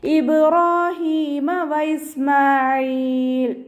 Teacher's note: റോ ഫതഹയാണ്, ഉയർത്തിയിട്ട് ഉച്ചരിക്കുക.